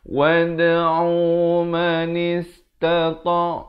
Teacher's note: Wad'u Wad'u, ada khokholah di sini. Khokholah sughra namanya, berikan lantunan. Jangan baca wad'u, tak betul.